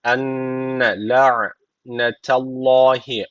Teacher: Allah lafzı kalın okunacak. Çünkü öncesindeki harfin harekesi üstte yani Allah lafzına üstten bağlanıyor. Dolayısıyla kalın okunacak Allah lafzı aleyhi.